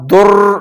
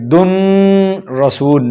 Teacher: را اور لام میں ود آؤٹ غنہ ادغام کیا جاتا ہے، یعنی بغیر غنہ کے ادغام کریں گے. تو لہٰذا یہاں پر در پڑھیں گے، دن رسول نہیں پڑھیں گے.